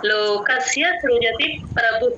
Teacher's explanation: ఆ సృ తేలిగ్గా చెప్పాలి వట్రసుడు ఎక్కడున్నా సరే అస్సలు స్ట్రెస్ ఇవ్వకూడదు